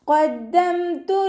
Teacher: ഖാഫ് ഇസ്തിഅലാന്റെ letter ആയതുകൊണ്ട് തഫ്ഹീം ചെയ്തിട്ട് ഉച്ചരിക്കുക. ദാലിന് ശബ്ദ വന്നു 2 ഹർഫുകൾ ഉച്ചരിക്കുന്ന കനം കൊടുക്കുക.